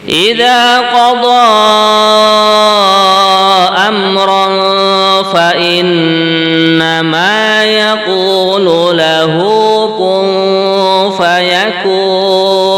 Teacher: Pada kalimat idza qada, nah di sini dibaca 4 harokat, mad jaiz fasil ya.